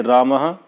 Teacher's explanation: विसर्ग के पूर्व आ आकार हो तो विसर्ग का उच्चारण हा हो जाता है।